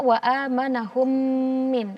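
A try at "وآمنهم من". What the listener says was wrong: Ya, tapi jangan terlalu menekan ya. Nanti kalau terlalu menekan sampai kadang ada yang membaca bibirnya jadi teleng-teleng gitu ya, jadi tidak sempurna.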